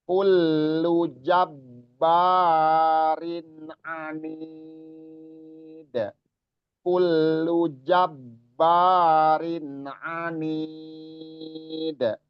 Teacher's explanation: Kalau di ba itu ada tasdid, pastikan bahwa ba itu double hurufnya. Jadi terjadi penekanan di situ.